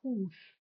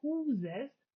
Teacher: we see the word hus for house, but that the plural huses has z in the middle of the word